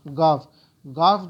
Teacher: گاف جو ہے تھوڑا سا بالکل اندر سے نہیں نکلے گا بلکہ جو زبان ہے حلق کے اوپر کے حصے سے نکلے گا